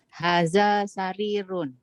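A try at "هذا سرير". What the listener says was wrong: Hadza sarirun. Ahsanti.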